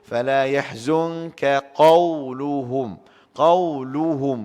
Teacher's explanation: Kaf istifal. Apa makna istifal? Rendah, lemah, lembut sikit. Dia bunyi lembut sikit. Qaf bunyi tebal sikit, isti'alat. Jadi kita sebut fala yahzunka qawluhum.